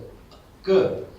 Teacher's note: when you are saying K, there is no aspiration. It's called sarala. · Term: Sarala consonant